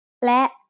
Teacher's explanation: และ is a high tone because it has an initial low-class consonant with a short vowel and a dead stop.